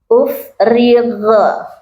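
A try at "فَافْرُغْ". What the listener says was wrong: Jangan mantul.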